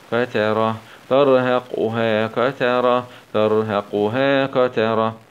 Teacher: نقف عليها بالسكون العارض مع همس الهاء